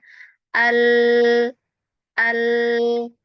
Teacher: Jadi sisi kanan dan kirinya itu masih bisa mengalirkan suara. Nah, jadi dia punya sifat inhiraf ya sifatnya ya di huruf lam ini.